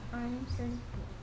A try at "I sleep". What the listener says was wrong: 이게 sleepy가 아닌데, 이번엔. Sleep.